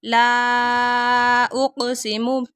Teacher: لام کے اوپر ماد آ رہی ہے اس لیے لمبا کر رہے ہیں، اور کاف کے اوپر کلکلا ہو رہا ہے۔